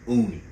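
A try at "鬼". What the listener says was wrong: Are you saying Uni? With an O? Yeah, I believe it's Oni. It's Oni, bro.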